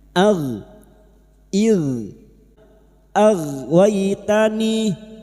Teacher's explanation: huruf gin memiliki sifat jahr dan rakhawah yaitu tertahannya nafas dan mengalirnya suara. Maka bunyinya ag ig ag waitani.